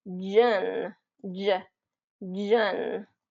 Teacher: It kind of gets that voiced quality instead of shh, it's getting jun.